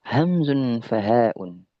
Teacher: makhrajnya adalah tenggorokan yang paling yang paling jauh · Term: hamzah